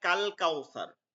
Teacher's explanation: লাম পড়া হয়েছে কারণ লামের পরের হরফ কমারিয়ার হরফ শামসিয়া না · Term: লাম উচ্চারণ